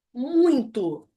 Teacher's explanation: exceto a palavra muito e seus derivados muitão muitíssimo ele vai ser um ditongo decrescente nasal